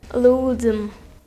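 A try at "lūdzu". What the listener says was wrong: Там нету буквы М. Лудзу.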